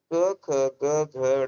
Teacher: अल्प प्राण अघोष, महाप्राण अघोष, अल्प प्राण घोष, महाप्राण घोष। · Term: कंठ्य